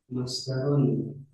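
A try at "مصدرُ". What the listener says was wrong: Masdaru aja jangan ditanwinin karena mudah.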